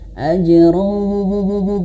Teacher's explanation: ajran berjumpa dengan huruf waw dan dia masuk ke huruf waw, ajrau dan masukkan ke dalam hidung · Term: idgham bi gunnah